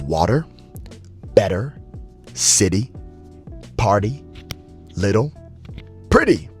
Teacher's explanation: between vowels sounds like a soft D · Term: flap T